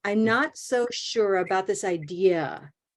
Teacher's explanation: we have a lot of small syllables and we have to mentally plan to keep them small so you can hit idea